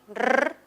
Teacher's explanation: el dígrafo doble R, que suena como una vibrante múltiple